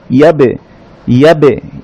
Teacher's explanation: এবার এক দাগের নিচে দুটো নুক্তা ইয়া, ইয়ার উপরে আসাইন দিয়া ইয়া, ইয়া সাউন্ডটাকে এই যে বা, এক দাগের নিচে একটা নুক্তা, এটা হচ্ছে বা, বায়ের উপরে সাকিন দেয়া, বা সাকিন কলকলা হয় বলেছিলাম, অর্থাৎ বা দুই ঠোঁট থেকে উচ্চারিত হয়, সেই সাউন্ডটা করে ইমিডিয়েট দুইটা ঠোঁটকে আলাদা করে দিলেই একটা রিভার্ব সাউন্ড হবে